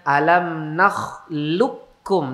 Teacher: alam nakhluqukum, langsung kaf, tidak perlu qaf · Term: idgham kamil